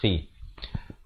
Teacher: kha ni pula kha beri kasrah di hujung kerongkong khi